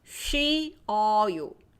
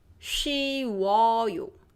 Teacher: The first one, only the first time is rounded.